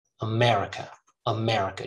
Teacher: america starts with a schwa ends with a schwa